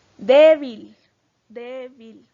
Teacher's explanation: tiene el acento en la penúltima sílaba o en la segunda posición de derecha a izquierda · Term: palabra grave